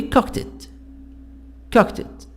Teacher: The D here, I pronounce it ta sound. T. Why?